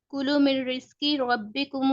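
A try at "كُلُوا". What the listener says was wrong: کلو نہیں ہے, دیکھیں کلو جھٹکے سے نہیں ہے, کلو یہ واو الف کا ساتھ ہے نا.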